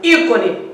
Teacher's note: Ícone, proparoxítona, porque tem a terceira sílaba de trás para frente, sendo a mais forte